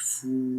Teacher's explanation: غین زبر غا، فا واو پیش فو، لمبا کریں گے. واو کے اوپر جزم ہے، سکون سائن ہے اور اس سے پہلے پیش ہے تو 1 سیکنڈ لمبا کریں گے